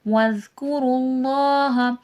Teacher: اللہ لفظ سے پہلے پیش ہے، موٹا کر کے پڑھا جائے گا